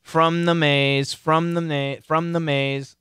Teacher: the M kills the th it actually converts to an N from The Maze from the ma from The Maze he'll be